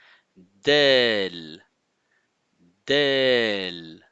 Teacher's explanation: Le bout de la langue est en appui sur la racine des incisives supérieures, donc les dents supérieures. Elle touche aussi la gencive.